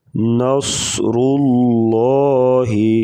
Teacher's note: صاد کو پور پڑھیں گے، موٹے حروف سے ہے